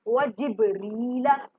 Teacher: बा साकिन है तो कलकला होगा, मतलब हिला के पढ़ेंगे या आवाज का पलट कर आना।